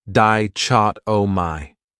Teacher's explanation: This word has 4 syllables, and the stress is on that second syllable, dichotomy. That third syllable has that schwa, that sound, di-chot-o-my.